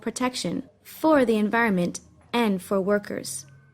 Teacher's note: stresses the word and to highlight the point that protection for workers is important